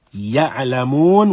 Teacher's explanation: This ya finds its origin in the middle of the mouth, in the middle of the tongue